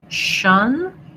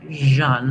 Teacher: So if I can say shun, I can also say jeune. I just turn my voice on. And then jeune, syllabic N. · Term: zh sound